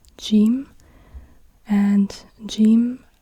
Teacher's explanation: if you are in Egypt there people pronounce this letter like G